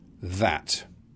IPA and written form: ðæt (that)